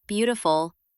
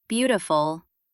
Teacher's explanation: we put the stress in the first syllable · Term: dactyl